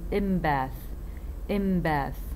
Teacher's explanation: b affects the in sounds and turn it into m. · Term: regressive